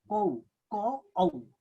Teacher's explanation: त्यस्तै कौ यहाँ क औ हेर्नुस् कौ क औ औ चाहिँ एकै झोक्कामा उच्चारण भयो